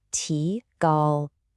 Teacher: The first character, ti, is a rising second tone. A lot of English speakers pronounce it with a flat first tone, like ti gal.